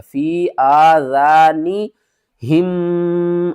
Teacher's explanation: ہونٹ جو ہے ایک دوسرے کے ساتھ مل جائیں گے آواز ہمارے ناک سے آئے گی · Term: غنہ